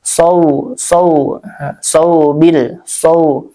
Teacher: Nah, ini ada harfu lin ya, huruf lin. Harfu lin yaitu wau ya, wau sukun sebelumnya fathah. Dibacanya dengan lunak ya, lembut seperti mengayun.